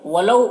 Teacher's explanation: واولین ہے، واولین کو نرم آواز کے ساتھ جلد پڑھیں گے۔